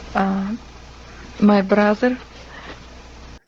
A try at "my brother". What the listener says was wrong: So brother, I gotta say it like I would normally say it. Brother has two R's. We have an R blend with a B, bruh, and then vocalic R on the end, So when she says it, she kind of rolls both of them and pronounces them with their tongue more to the